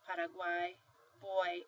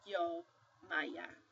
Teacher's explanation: sometimes your Y is going to sound like a semivowel. It's soft, Paraguay, boy, and sometimes it's going to be a little harsher